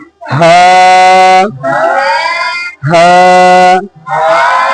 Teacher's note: হা হরফটি উচ্চারণ হয় কণ্ঠনালীর এই অংশ থেকে, যে অংশ সিনার সঙ্গে লাগানো